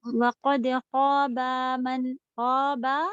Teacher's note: خا کے ساتھ تو الف تھا، با کے ساتھ صرف حرکت تھی